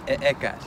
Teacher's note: This sound is represented by an H in classical orthography, and in modern Nahuatl, it's pronounced as in the English word house, but in classical Nahuatl, it would be pronounced with the glottal stop